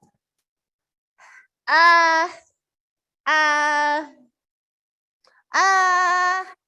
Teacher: there's no tongue position it just hangs in the air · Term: schwa sound